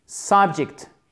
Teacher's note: Accent tonique sur la première syllabe · le E se prononce comme un I court